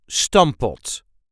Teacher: technically there are two P's in there, but we only pronounce one P.